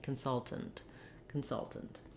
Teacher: So we go right from the T to the NT, consultant, consultant. If there's any vowel in there, it's going to be a little I sound or a tiny unstressed schwa, very reduced vowel.